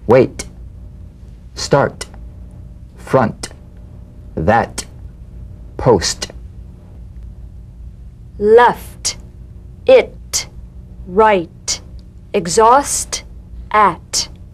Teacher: Cognate to the D. The same staccato springing action as the D drum beat, with no voice, forms the light tap of the T. Feel a gentle pulsation in the tongue. · The unvoiced T, tongue front palatal stop consonant. Cognate to the D. The same staccato springing action as the D drum beat, with no voice, forms the light tap of the T.